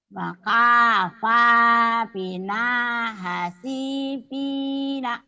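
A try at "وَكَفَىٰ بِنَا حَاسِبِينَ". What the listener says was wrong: yang panjangnya mana? Panjang pendeknya masih nyungsep nih. Yang panjangnya panjang. Wakafa. Wakafa bina hasibina. wa kafa bina hasibina.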